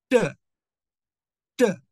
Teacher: For t, we keep the tongue sharply right at the ridge.